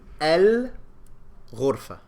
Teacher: So there's no shadda, and I pronounce the lam. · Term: lunar